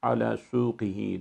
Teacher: ala suqihi derken orada kesreli bir kaf harfimiz var. Kalın bir harftir. İnceltmeme dikkat ediyoruz.